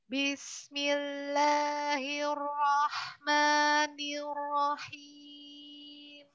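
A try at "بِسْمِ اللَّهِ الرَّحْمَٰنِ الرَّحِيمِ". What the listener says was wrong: Ya, hir, hirnya masih terlalu, bergetarnya terlalu lebih.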